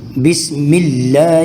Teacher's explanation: بسم اللہ، یہاں لفظ اللہ سے پہلے میم کے نیچے زیر ہے، تو لفظ اللہ سے پہلے اگر زیر آ جائے تو اس کو باریک پڑھنا ہے